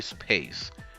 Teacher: P follows the S, and it is in middle position. So um, it is unaspirated.